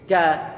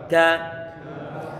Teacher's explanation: Huruf kaf dia makhrajnya adalah tenggorokan bagian belakang, walaupun toh nggak sampai bagian huruf kafnya, tapi agak ke depan sedikit.